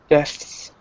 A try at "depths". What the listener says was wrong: So try to make sure you pronounce the P. Otherwise, it sounds like deaths, which could also happen. Depths.